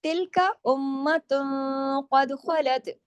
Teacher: اب تا دو پیش تن جو ہے یہ اب یہ ہیوی اخفا ہو رہا ہے، کیوں؟ آگے قاف ہے، موٹا حرف ہے، اخفا حقیقی غنہ کاملہ ہو رہا ہے، لیکن اخفا بھی موٹا ہو رہا ہے، موٹے حرف کی وجہ سے۔